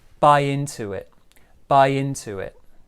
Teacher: here small stress on bi big stress on into and also we've got a bit of linking there with the w sound